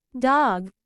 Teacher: briefly and releases the the air dog the de sound is also produced with the tip of the tongue touching the alvear ridge but in this case the sound is voiced